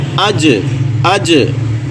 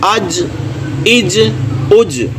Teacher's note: اس میں قلقلہ بھی ہوگا، حمزہ پیش جیم اج، لیکن دیکھیں جیم جو ہے یہ وسط لسان زبان کا درمیان والا حصہ، اس کے مقابل میں اس کے بالکل اوپر سیدھ میں جو تالو ہے وہاں پہ جا کے ہلکا سا لگ جائے گا